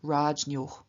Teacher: the N after the palatal J changes into palatal Ny, and so we get Rajnyoh.